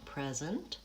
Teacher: First syllable stressed, present, pure vowel and long